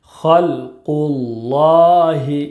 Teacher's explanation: خا لام زبر خل، قاف لام پیش قل، خلقل، لام کھڑا زبر لا، خلق اللہ، ہا زیر ہی، خلق اللہ۔ خا اور قاف یہ حروف مستعلیہ کے 7 حروف میں سے ہے، اس لیے دونوں کو پر یعنی موٹا پڑھیں گے